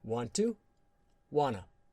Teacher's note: 't' + 'to' often becomes 'da' or 'na' sound